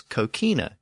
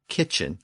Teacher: kokina in the original common West dermatic language but in English that hard k sound in the middle shifted to the newer CH sound